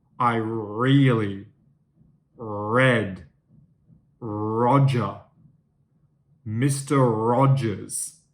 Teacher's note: the r sound is coming from further back here in my throat